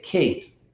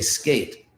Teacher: when you say Kate you're breathing out more when you say skate you're not and so in the word kate it's an aspirated K and